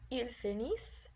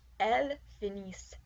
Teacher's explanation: Notice for they that the ENT ending is not pronounced.